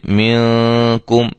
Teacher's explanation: غنے میں فرق یہ ہوگا کہ اس کا اخفا باریک ہوگا، آواز باریک محسوس ہوگی غنے کی